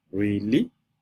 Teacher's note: See the second tone is rising and the fourth tone is the falling tone. This is the rising and the falling tone. That's the third tone. So the word you used to remember it is really.